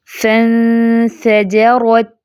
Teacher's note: اب را کو فیٹ، جیم کو لائٹ رکھنا ہے، جیم باریک لیٹر ہے۔